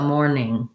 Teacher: for the N sound in mourn, the front of your tongue lifts, and in the NG sound in ing, the back of your tongue lifts. So morning.